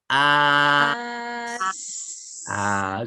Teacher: Masa Ustaz sebut akhir as itu, hujung lidah sentuh gusi gigi bawah. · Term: makhraj huruf sin